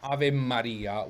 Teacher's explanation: Ave Maria with a double M in standard dizione Italian because this M gets doubled whenever it's preceded by a vowel.